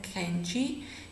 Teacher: This k, it is a uvular k as in kenchi. It's normally we don't pronounce it.